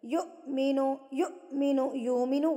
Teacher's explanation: حمزہ کے اوپر جب جزم آ جاتی ہے تو اس کو جھٹکا دے کے پڑھا جاتا ہے